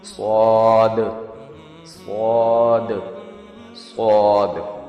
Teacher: یہ sound sharp اور heavy ہوتا ہے اور فیرنجیل میں ہوا کے پریشر سے ہوتا ہے